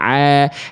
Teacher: ainnya ini bukan salah besar karena sudah jadi ain sudah dari tengah tenggorokan a tapi sifatnya belum benar bunyinya kalau dia berubah jadi hamzah rabbil alamin e tertukar hurufnya baru salah besar tapi ini sudah jadi ain ainnya tapi belum proporsional bunyinya nya gitu.